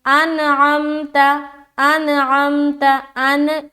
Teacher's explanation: اس کے بعد انعمت، انعمت، حمزہ نون زبر ان، یہاں پر نون کے اوپر دیکھیے سکون ہے، یعنی کہ نون ساکن ہے، اور نون ساکن کے بعد حرف عین ہے، تو یہاں پر ہم اظہار کا قاعدہ کریں گے، یعنی کہ نون کی آواز کو ظاہر کرنا ہے۔ یہاں پر بالکل بھی دیر نہیں لگانی، بالکل بھی روکنا نہیں ہے اپنی آواز کو۔